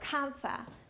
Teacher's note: On top of this, there was an added element that Mandarin has that English does not, and that is that N will become deleted or null when it is in front of a consonant for ease of articulation